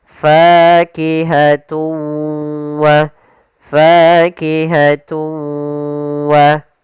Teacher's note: Cara membacanya yaitu suara tanwinnya kita masukkan langsung ke huruf waw dan kemudian kita tahan gunnahnya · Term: idgham bi gunnah